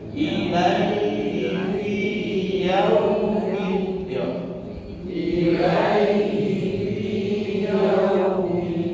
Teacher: Yaum bukan yaum yang yaum, tapi yaum ke arah u. Yaum jangan ke arah o. Yaum tapi yaum ke arah u ya.